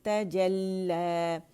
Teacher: त बारीक जेम बारीक और लाम पे मुशद्दद, इस पर जमाव देंगे तजल्ला. अच्छा, अब लाम जो है उसमें पहला साकिन है, दूसरा मुतहरिक ज़बर के साथ फतह के साथ है.